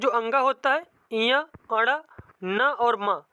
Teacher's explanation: ये सब मतलब इनका उच्चारण होता है नासिका के द्वारा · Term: नासिका द्वारा उच्चरित